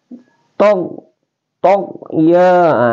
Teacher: Go adanal khalqi ini huruf adanal khalqi, jadi dia di ujung tenggorokan ya.